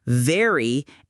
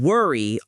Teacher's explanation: For V, your bottom lip touches your upper teeth. For W, your lips form a circle.